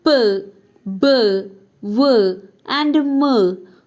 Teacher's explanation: both the lips are involved the lower lip is the active articulator and the upper lip is the passive articulator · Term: bilabial sounds